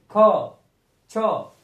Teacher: शवास बाहर ज्यादा निकलता है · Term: महाप्राण